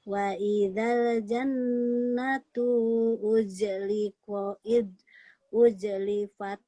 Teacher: Jadi nun bertasdid gunnah. Terdengung ya sedikit.